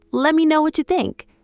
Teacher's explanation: The T and Y become CH again.